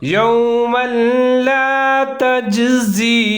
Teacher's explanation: شیئا ولا يقبل، آگے ہے یوما لا تجزی، میم کے اوپر 2 زبر، تنوین ہے، آگے لام مشدد ہے حروف یرملون کا، یہاں پر بھی ادغام کریں گے لیکن غنّہ نہیں کریں گے، بلا غنّہ۔